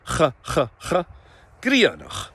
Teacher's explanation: We need to engage that fricative sound at the back.